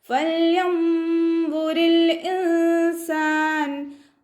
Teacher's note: നമ്മുടെ മേലെ മുൻപല്ലിൻ്റെ അറ്റം താഴെ ചുണ്ടിൻ്റെ ഉൾവശത്ത് വെറ്റായ ഭാഗത്ത് വെച്ചിട്ട് ഉച്ചരിക്കുക.